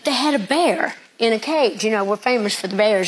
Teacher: I was told to listen for a sh sound on the s's